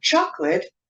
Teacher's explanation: chocolate is pronounced with a stress on the first syllable